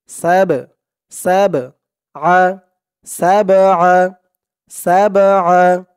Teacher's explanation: এই বাটা কলকলার হরফ ধাক্কা দিয়ে পড়তে হবে।